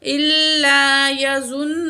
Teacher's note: زوا کو موٹا کر کے پڑھیں گے · واو ساکن اس سے پہلے پیش ہے واو مد ہے 1 کاؤنٹ کھینچ کے پڑھیں گے